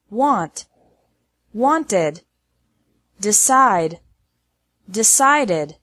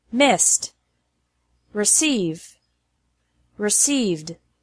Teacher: with these verbs the e d adds an extra syllable